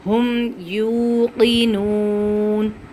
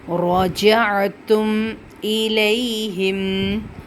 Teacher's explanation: جب ہم میم کی آواز نکالتے ہیں آٹومیٹک ہمارے ناک سے بھی غنہ کی جو اس کی جو صفات ہے وہ ادا ہو جاتی ہیں